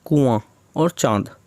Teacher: अनुनासिक में नाक और मुंह से ध्वनि निकलती है, नाक और मुंह के थ्रू।